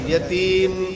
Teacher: جب میم پر وقف کریں گے تو اس میں آواز ناک کے اندر جائے گی